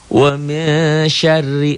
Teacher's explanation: Kenapa ikhfa? Kenapa dibaca samar? Karena nun mati atau nun sukun bertemu dengan shin. · roknya dibaca tipis karena barisnya di bawah